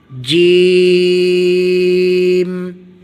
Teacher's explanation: تالو سے جیم پڑھا جائے گا